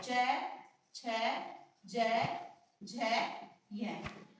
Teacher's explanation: च छ ज झ य ये सब कहां से बोले जाते हैं तालू से बोले जाते हैं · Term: च वर्ग